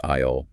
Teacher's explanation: It has an invisible, entirely silent S just sitting right in the middle of it.